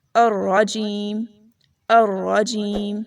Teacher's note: اس میں را کو موٹا پڑھنا ہے اور منہ کو بگاڑ کر مت پڑھیے، اس میں انگلش کی طرح اسے را نہیں پڑھنا، را اس طرح پڑھنا ہے، الرجیم الرجیم۔